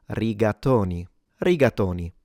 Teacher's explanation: the O for the advanced learners or native speakers in standard Italian is an closed O.